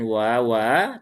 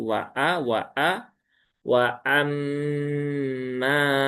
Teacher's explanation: wa amma ya wa amma wunnya tipis, hamzahnya harus jelas ya. Jangan diringankan.